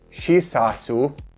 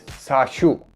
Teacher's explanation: Remember that the Y compound vowels are an E plus the vowel. So if tiot is before a Y compound vowel, it becomes SH rather than S. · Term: post-alveolar fricative